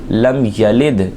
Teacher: دال ساکن میں کلکلہ بھی کریں گے